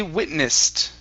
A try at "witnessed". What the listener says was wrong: Yeah, with the T sound there.